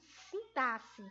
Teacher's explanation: A palavra correta é sintaxe, como se o XE aí fosse a pronúncia de dois S.